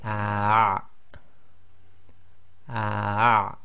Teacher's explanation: you're blocking the middle of your throat when you say the ah, ah. Some people can't actually do that, so just try your best. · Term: ayn